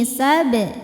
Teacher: Ini alif ini sebetulnya hamzah wasal ya. Hamzah wasal ini kalau di tengah bacaan tidak kita baca. Kalau di awal bacaan baru kita baca dengan harokat tertentu.